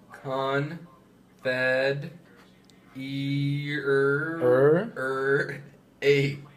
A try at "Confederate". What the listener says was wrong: Okay, since we know it's not a, it's probably going to be more of an it sound.